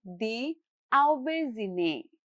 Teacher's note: the final syllable keeps a soft French style zhe sound as in the English word measure